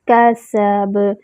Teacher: کاف کا مخرج اقصی اللسان، سین میں جو ہے وہ سیٹی کی آواز آئے گی، اور با میں جو ہے وہ قلقلہ ہوگا۔